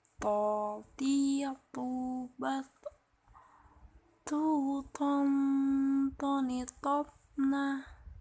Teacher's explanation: Melafalkan huruf to dikeluarkan dengan menyentuhkan ujung lisan dengan tempat tumbuhnya gigi seri bagian atas. Huruf to tidak mengalir nafas, diucapkan dengan cara menebal.